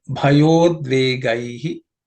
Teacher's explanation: The bhaya, the ya and u becomes yo. So it becomes bhayodvegaihi.